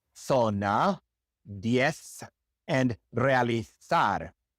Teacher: In Spain, the Z is pronounced like a TH in English.